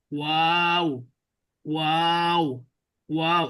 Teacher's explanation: প্রথমে অ উচ্চারণ হয়, তারপরে আ উচ্চারণ হয়, তারপরে আবার শেষে অ উচ্চারণ হয়, সাউন্ড আসে, অ সাউন্ড আসে, আ সাউন্ড আসে, অ সাউন্ড।